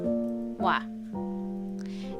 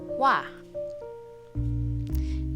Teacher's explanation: Next diphthong is a combination of o and a, and when we pronounce it, it becomes wa.